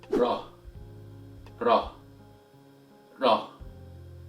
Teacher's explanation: They are close, but still different. In fact, the sound of the Arabic Ra happens slightly back at the end of the alveolar ridge